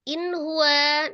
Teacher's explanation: Huruf ha adalah salah satu huruf yang keluar dari alhalqi atau tenggorokan tepatnya tenggorokan bagian bawah nun sukun ketemu hannya jadi namanya izhar halq dibaca dengan jelas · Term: izhar halqi